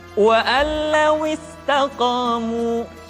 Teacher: Sementara kalau idgham bila gunnah, nun mati tanwin dimasukkan pada huruf lam dan ra yang dihadapannya tanpa harus ditahan